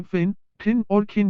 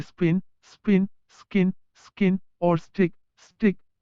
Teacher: अंग्रेजी भाषी शब्द के आरंभ में पटक ध्वनियों का उच्चारण फ, ठ और ख करता है